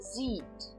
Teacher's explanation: Eu apenas dou uma entonação longa maior no i